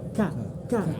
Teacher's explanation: K ini ada hamas, ada angin yang keluar.